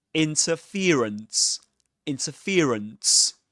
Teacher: the main stress goes on fear, the syllable fear. And the secondary stress goes on the syllable in, interference, interference.